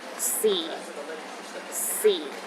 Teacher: the fourth tone is the lowest tone